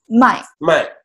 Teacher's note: So the fourth tone is kind of like angry when you say no. So you just go down.